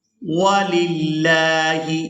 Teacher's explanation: यहाँ लफ्ज़ अल्लाह के लाम को बारीक अदा करेंगे